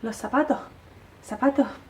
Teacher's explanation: a veces aspiran la s